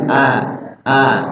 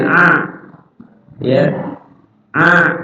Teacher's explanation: cara keluarin hamzah itu dari sini, bawah tenggorokan. Hamzah itu hanya di sini.